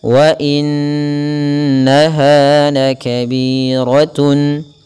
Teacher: Ada bacaan gunnah, yaitu huruf-huruf yang memang perlu kita tahan dulu dalam pelafalannya, yaitu italus sauti minal khayshum, mengeluarkan memanjangkan suara sepanjang 2 harakat, dan itu melalui rongga hidung. Maka wa in maka tidak langsung kita lafazkan dalam melafalkan nun bertasydid.